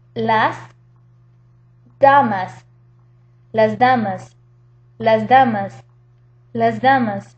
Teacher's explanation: Because the D, the D, is voiced, or sonora, that S will become voiced or sonora as well. So instead of saying las damas, when you say it quickly, it becomes las damas with a Z sound.